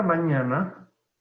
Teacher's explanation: En este caso, la palabra mañana lleva el acento en la penúltima sílaba. Por tanto, es una palabra grave o llana.